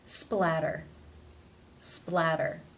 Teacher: they come between two vowel sounds therefore it is the flat tap t or the d sound